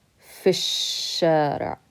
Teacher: We're going to skip over this alif, and we can't pronounce the lam because it's a sun letter. So we skip over it and we say fish-shari'.